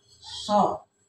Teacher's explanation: Jadi lidahnya melengkung ke atas jadi bunyinya tebal. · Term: huruf so